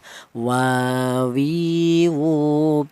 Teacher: berasal dari kedua bibir yang renggang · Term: huruf au